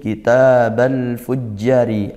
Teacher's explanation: al fujjari izhar qamariyah, al bertemu huruf fa, huruf qamariyah dibaca jelas lamnya.